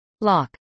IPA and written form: lˈɑk (lock)